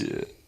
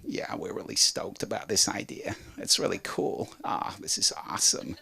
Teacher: There is one lower register than the chest. It's called vocal fry.